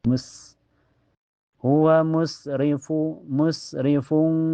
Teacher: dia mempunyai sifat safir dan hames keluar ee ee nafas dan suara yang berdesis mus hua musrifu musrifung fung setelahnya ada hukum ikhfa hakiki atau lebih lengkapnya ikhfa ab'ad.